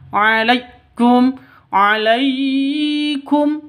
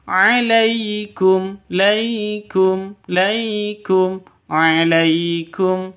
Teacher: alaikum lai sifat lin, lentur lemes tidak boleh disentak, jangan dipanjangkan.